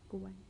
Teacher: à la deuxième personne, le te reste toujours occlusif